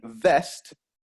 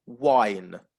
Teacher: there is no contact between the lips and the teeth all you're doing is making your mouth into a into a circle